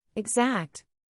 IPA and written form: ɪɡˈzækt (Exact)